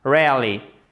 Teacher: en faisons l'accent tonique en première position ça donnera rarely et le E ici deviendra muet vous l'écrivez